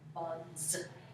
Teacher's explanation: So if we did the word B-U-G, bug, and then we add a suffix S to say more than one bug, bugs. Hey, that S just made a Z sound, bugs.